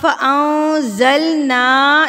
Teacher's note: نون کے اوپر کیا ہے؟ زبر ہے، اور نون کے بعد کیا ہے؟ الف ہے، تو نا کو ہم نے ایک حرکت کے برابر کھینچنا ہے